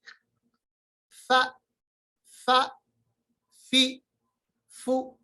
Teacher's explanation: फा is pronounced from the एज of the upper front teeth and the वेट part of the lower lip, यानी जो lower lip का जो वेट part है, internal part है, जो तर वाला हिस्सा है, उसके साथ हम ऊपर वाले दांत जो दो दांत है तना या उलिया जिनको नाम दिया है उनका नोकीला हिस्सा आपस में मिलाएंगे।